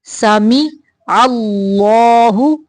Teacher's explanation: اللہ کا لام موٹا پڑھیں گے